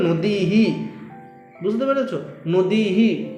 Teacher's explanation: এখানে বিসর্গটা বাদ দিয়ে তুমি হ এর উচ্চারণ করতে পারো কিন্তু যেহেতু নদীর শেষে আমাদের দীর্ঘ ইকার ছিল তাহলে উচ্চারণের ক্ষেত্রে হ এর শেষেও কিন্তু আমাদের দীর্ঘকারের উচ্চারণ হবে